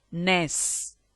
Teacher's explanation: N. Alveolar nasal. Ness.